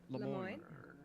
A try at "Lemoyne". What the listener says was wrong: You're pronouncing the city in the French way, and you're pronouncing the district in the American way.